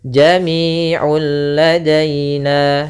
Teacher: Dan di sini juga dinamakan dengan idgham kamil yang artinya langsung hilang seluruhnya suara nunnya sehingga langsung masuk kepada huruf lam. Nah, di sini bila ghunah artinya tidak disertai dengan namanya ghunah.